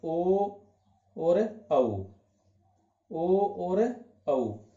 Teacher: कंठोष्ठे में कौन कौन से आ जाते हैं? कंठ और ओष्ठ, यानी ओ और औ